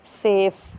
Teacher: एफ़ को तो आपको पता चलेगा कि आपका लोअर लिप और अपर टीथ जो है वो एक दूसरे के साथ प्रेस हो रहा है। इसी तरह वी को जब आप प्रोड्यूस करेंगे तो आपके अपर टीथ जो है वो आपके लोअर लिप के साथ जो है वो प्रेस हो रहे हैं, और वो साउंड जो प्रोड्यूस हो रहा है वो है लैबियोडेंटल साउंड।